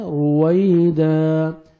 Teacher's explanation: الف مدہ 1 سیکنڈ دال کو کھینچنا ہے